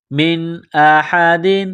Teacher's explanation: نون ساکن کے بعد حمزہ ہے، حروف حلقی ہے، تو نون ساکن پر غنہ نہیں کریں گے